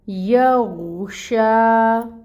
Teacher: غین ساکن ہے اور یہ حروف مستعلیہ میں سے ہے، مستعلیہ میں سے ہے تو اس کو پر پڑھیں گے، غین کو پر پڑھیں گے، اور شین کے اوپر کھڑی مد ہے، 2 حرکت کے برابر اس کو لمبا کریں گے، اور شین کی جو صفت ہے تفشی کی اس کو بھی واضح کریں گے۔